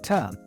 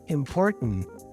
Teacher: What we have to do to make the sound is we have to eliminate or cut out the vowel. There is no vowel sound to be pronounced, so the vowel disappears. And then the T before is a non-released T.